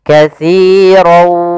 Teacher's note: masukkan tanwin kepada huruf waw, maka dia langsung berbunyi waw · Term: idgham bi gunnah